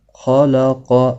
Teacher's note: خا بھی پر پڑھا جاتا ہے، قاف بھی پر پڑھا جاتا ہے، کیونکہ حروف مستعلیہ میں سے ہیں